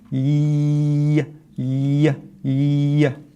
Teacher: The ya is also a continuous letter, right? So you can keep saying it because the air is flowing. Y, y, y. So it's not blocking the air like the jim does.